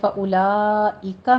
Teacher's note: فاولئک میں مد متصل واجب ہے، یہاں پہ 5 کاؤنٹ کرنے ہیں